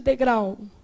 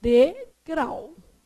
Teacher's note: É oxítona terminada em ditongo. A sílaba tônica é a última, degrau. Então, ela não ia ter acento nunca.